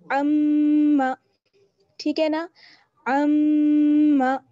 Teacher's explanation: तो आइन का मखरज आपको मालूम है, हलक का दरमियानी हिस्सा, अम्मा, और मीम पर जब शदा जाती है तो वहां पर गुन्ना होता है। गुन्ना यानी नाक में आवाज लेकर जाएंगे और एक अलिफ के बराबर ठहरेंगे, अम्मा।